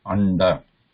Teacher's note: This na is a nasal plus it is cerebral or a retroflex. It is not pure nasal.